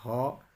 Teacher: स्वर यंत्रमुखी एक ही व्यंजन होता है जिसे कहते हैं ह, और ये इस व्यंजन के उच्चारण से क्या होता है, अंदर से आती हुई श्वास तीव्र वेग से स्वर यंत्र मुख पर संघर्ष उत्पन्न करती है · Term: काकल्य व्यंजन